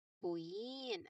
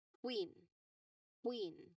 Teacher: Focus on the quick movement from the back of the tongue to the rounded lips.